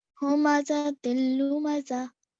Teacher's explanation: complete assimilation happened with the lam